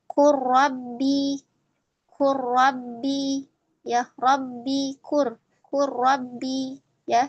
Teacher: Jadi ketika qul bertemu dengan rabbi ya, qul lamnya sukun kemudian ada rabbi ya rnya ee berharakat kepada tasydid maka kita baca ee dengan ee rnya ya. Lamnya tidak tidak terbaca tetapi yang terbaca adalah ro. Dia melebur sempurna ya.